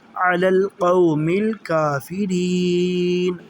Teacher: نا، علی القوم الکافرین، یہاں آیت بھی مکمل ہوتی ہے اور یہاں پہ ہم نے وقف کرتے ہوئے نون کے اوپر جو زبر ہے اسے جزم پڑھیں گے